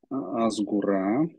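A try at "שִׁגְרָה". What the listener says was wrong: Нет, жгура, жгу, ше, это ше, жгура.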